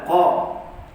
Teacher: huruf qaf kita sebut dengan bacaan isti'la, terangkat pangkal lidah kita bila menyebut huruf qaf tebal